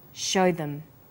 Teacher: show is stressed and them is unstressed. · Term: vowel and consonant linking